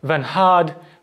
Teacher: the n of nhad is voiceless aspirated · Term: voiceless nasal